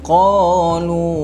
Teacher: Lu itu boleh jadi 4 ataupun 5 harakat